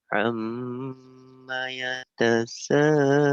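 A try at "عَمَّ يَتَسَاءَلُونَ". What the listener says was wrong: Ainnya kurang keluar ya. Ain. Amma yatasaalun. Ain dan Hamzah bedakan. Ain. Yang pertama Ain, yang tengahnya Hamzah. Amma yatasaalun.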